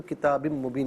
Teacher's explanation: باقی نیچے 2 زیر کی تنوین ہے، اسے مبین کی میم کے ساتھ ملا کر میم کی آواز کو غنے کے ساتھ ملائیں گے، غنے کے ساتھ ادا کیا جائے گا، اور یہاں یرملون کا جو قاعدہ ہے وہ اپلائی کیا جائے گا۔